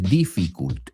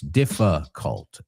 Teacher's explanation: La segunda I es como una A. Right? A schwa sound, como lo decimos.